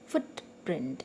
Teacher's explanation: it's a noun so that's why the stress is on the first part · the stress is on the first part of the first word, on foot, or first part of the word you can say.